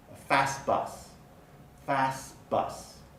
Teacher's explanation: the t at the end of fast is often deleted when the next word begins with a consonant